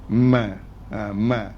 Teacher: dia akan keluar pada dengung di hidung